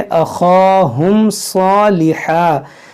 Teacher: यहाँ देखें ख हुरूफ है मुस्तालिया, इसको मोटा करेंगे